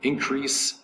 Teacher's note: again increase is two syllables accent is over the first syllable